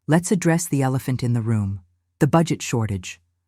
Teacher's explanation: Stress elephant naturally to highlight the issue.